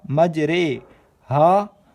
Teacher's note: را کو اردو کے لفظ قطرے کی را کی طرح پڑھیں، یعنی ری کی نہیں بلکہ رے پڑھیں۔ امالہ کے ہجے اس طرح کریں: میم جیم زبر مج، را امالہ والی رے، مج رے، ہا الف زبر ہا، مج رے ہا۔